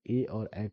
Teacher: कंठ और तालु से ए और ऐ का उच्चारण हो जाएगा